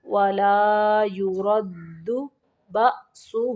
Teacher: ولا یرد بأسہ، با زبر حمزہ با یہاں پہ جھٹکا دینا ہے